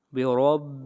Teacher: را کو موٹا پڑھیں گے اس لیے کہ را کے اوپر زبر ہے۔ جہاں بھی را کے اوپر زبر آئے گی یا پیش آئے گی وہاں پر را کو موٹا پڑھا جائے گا۔